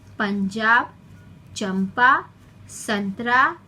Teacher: इसके उच्चारण में वायु मुंह और नाक से बाहर निकलती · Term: अनुस्वार